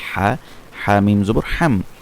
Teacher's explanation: হা হচ্ছে হলকের মধ্যখান থেকে